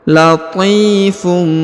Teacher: Perhatikan huruf t dipanjangkan 2 harokat karena di depannya terdapat huruf ya berharokat sukun ya.